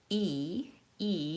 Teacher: my tongue is high and in the front.